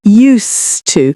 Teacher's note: we've got the s sound, not zed · So again, we've got the S sound, not Z. Used to. We also don't really pronounce the D much.